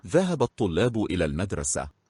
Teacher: So the L, the first L was also dropped, it's silent.